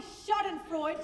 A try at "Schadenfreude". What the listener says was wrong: Ha! There, you see. You left off the last syllable.